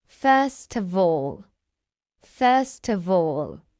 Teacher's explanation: we take the consonant sound t at the end of first and join it to the following vowel sound uh first. First T. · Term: consonant to vowel linking